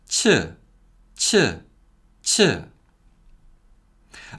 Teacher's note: cheat is a voiceless sound with heavy aspiration